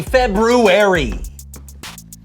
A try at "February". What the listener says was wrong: Did you say February? Yeah. I know there's an R there, but most people don't pronounce it. Actually, the extra R comes from the original Roman calendar when it was called Februarius.